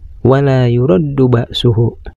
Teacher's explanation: ada huruf lam yang berbaris fathah menghadapi huruf alif mati. Ini dinamakan mad tabi'i yang harus dibaca panjang. Panjang bacaannya 2 harkat. Dan selanjutnya ada huruf ro yang berbaris fathah oleh huruf yang hidup.